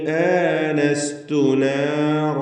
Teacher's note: ആനസ്തു മദ്ദുൽ ബദലാണ് അതിലുള്ളതെങ്കിലും 2 ഹർക്കത്തിൻ്റെ അളവിൽ മാത്രമാണ് നാം ദീർഘിപ്പിക്കേണ്ടത്.